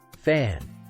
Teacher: place your hand on your throat and say fan and you'll feel no vibration at all